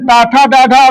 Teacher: देखो जीभ मुड़ जाती है, इसीलिए इसको मूर्धन्य कहते हैं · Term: मूर्धन्य व्यंजन